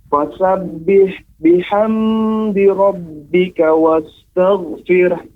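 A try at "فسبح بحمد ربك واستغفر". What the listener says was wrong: Iya, tapi di catatannya adalah ketika pengucapan huruf ham. Fasabbih biham. Nah, di sini ditekan. Ya, tidak boleh ditekan, Pak. Tapi dia bihamdi. Ya, tidak boleh biham. Nah, karena tidak ada tasydidnya.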